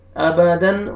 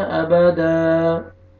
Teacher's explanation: अलिफ मद्दा, अलिफ से पहले ज़बर है, हा को आपने खींचना है और ऊपर मद्दे जायज़ भी है, 3 से 4 अलिफ के बराबर आपने खींचना है। अबदन, वक्फ करेंगे, स्टॉप करेंगे तो दाल ज़बर अलिफ हो जाएगा